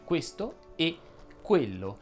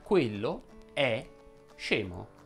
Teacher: La E chiusa è quella della congiunzione, per intenderci, questo e quello, e si differenzia dalla E aperta, quello è scemo.